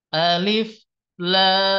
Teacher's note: ejaan huruf lam itu diakhiri dengan suara mim sukun lalu bertemu dengan mim ya di depannya maka di sini Terjadi yang disebut dengan idgam mimi ya maka